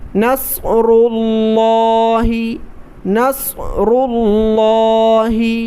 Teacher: یہاں پر دیکھیں را پر پیش ہے تو را کو موٹا پڑھیں گے، صاد کو موٹا کیا، اس کے بعد را کو بھی موٹا کیا، اور لفظ جلالہ یعنی اللہ تبارک و تعالیٰ کے نام کو موٹا ہی کر کے پڑھا جاتا ہے، پر پڑھا جاتا ہے، اس لیے اس کو موٹا کر کے پڑھیں۔